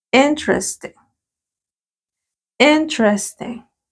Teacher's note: no como la i de iglesia en español no sino como una y sin ganas